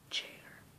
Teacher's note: it starts with there being a blockage and then it's released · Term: affricative